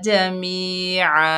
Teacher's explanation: वाफ की हालत में दो ज़बर की तनवीन अलिफ मद्दा में बदल जाएगी, एक ज़बर ख़त्म हो जाएगी, वक्फ होगा वक्फ बिल इब्दाल।